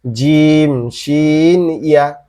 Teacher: জিহ্বার মধ্যখান তার বরাবর উপরের তালুর সঙ্গে লাগায়া